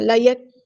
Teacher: کاف میں ہمس کی صفت ہوگی اور کاف باریک ہوگا